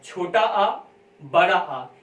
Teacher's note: इसमें वायु सिर्फ मुख से निकल रही है, नाक से नहीं निकल रही है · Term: निर्नुनासिक